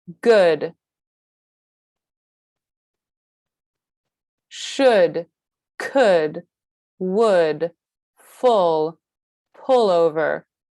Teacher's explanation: Here, the back of our tongue is still high, but it is a little bit more relaxed than ooh, and our lips are round and small, but less firm. Our jaw is beginning to drop, and we are starting to release some of that tension that we have in the word, in the sound ooh.